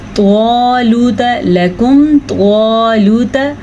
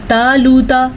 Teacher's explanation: توا کو پر پڑھیں گے، تا کو باریک پڑھیں گے۔ یہی فرق ہے ان دونوں کے درمیان میں۔